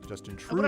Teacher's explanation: Emphasis on the first syllable of his last name, Justin Trudeau.